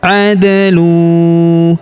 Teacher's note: Kemudian huruf da berharokat sukun kita pantulkan atau kita qalqalahkan. Adlu. Kemudian tanwin huruf lun bertemu huruf waw berharokat tasydid, maka tanwin unnya melebur masuk ke huruf waw yang berharokat tasydid.